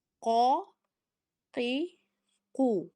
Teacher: قوف حلق سے ادا ہوتا ہے، زبان کے پیچھے والا حصہ استعمال ہو رہا ہے